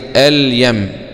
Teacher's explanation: كلمة مثلا أليم دخلنا عليها ايه عفوا أعوذ بالله من الشيطان الرجيم، كلمة اليم هي كلمة يم دخل عليها اللام التعريب بقت ايه اليم، اليم يبقى ايه هذه حكمها ايه، يبقى الإظهار وجوبا لوقوع الياء بعد اللام، والياء من حروف ابغي حجك وخف عقيمة.